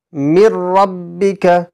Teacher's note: তানবিন অথবা নুন সাকিনকে বিনা গুন্নায় তাড়াতাড়ি পড়তে হবে, অর্থাৎ মিলিয়ে পড়তে হবে।